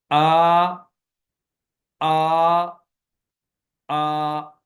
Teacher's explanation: اس میں گلا بالکل خالی رہا ہے، کوئی آواز کی رگڑ پیدا نہیں ہوئی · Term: حمزہ